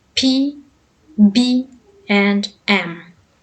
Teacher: Bilabial happens when upper and lower lips touch each other. Bilabial sounds include P, B, and M.